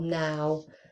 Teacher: It's really tempting when we are transcribing a word such as now or how, we think it might have a w at the end, but actually we do not produce a w when we're just using that one syllable, now. Okay.